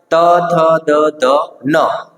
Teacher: એટલે શું તો દંત્ય એટલે દાંત તો કે જે વર્ણના ઉચ્ચારણમાં જીભ જે છે આપણી દાંતના ઉપલા ભાગમાં ઉપલા દાંતને સ્પર્શીને એના મૂળ ભાગમાં સ્પર્શ કરે છે અને ધ્વનિ ઉત્પન્ન થાય તો તેને કહેવાય આપણે દંત્ય વર્ણ મિત્રો તો દંતીય વર્ણની અંદર